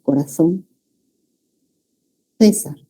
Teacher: ellos también la C delante de EI la pronuncian como Z, ¿no? O sea, interdental.